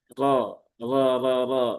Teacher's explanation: tafkhim ya tebal dengan tebal dengan cara diangkat pangkal lidahnya